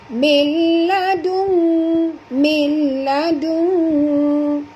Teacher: Nun mati bertemu dengan lam ya. Itu kita kena masuk tanpa dengung, idgham bila gunnah.